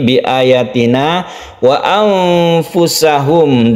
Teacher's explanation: Di sini ada nun mati bertemu dengan fa, dibaca ikhfa, artinya samar dan kita dengungkan.